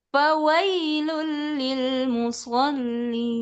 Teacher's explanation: Sekarang awalnya tinggi, ujungnya turun.